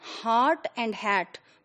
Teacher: in Nigerian pronunciation, heart and hat, both are pronounced as hat.